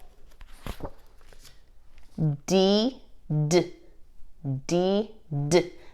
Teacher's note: this is a stop sound it's one click of the tongue one breath of air